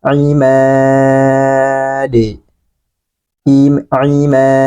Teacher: Huruf dal. Nah, ini kita sukunkan, maka dia harus dipantulkan.